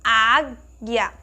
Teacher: Quando nós temos uma palavrinha que nós notamos que é aquela sílaba mais forte, ela é mais aberta, quando nós pronunciamos a palavra, ela é mais aberta, então nós utilizamos o acento agudo. O acento agudo tem esse timbre mais aberto, como nós pronunciamos na palavra águia.